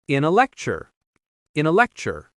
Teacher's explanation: the word uh is weak and reduced to the schwa sound uh. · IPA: /ə/